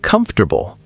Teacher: The or just disappears.